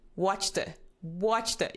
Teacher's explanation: you put the emphasis on Watch